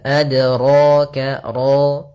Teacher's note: kemudian pada lafal ra ditebalkan